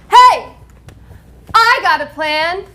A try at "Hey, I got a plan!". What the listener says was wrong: I got a plan is not one word do it again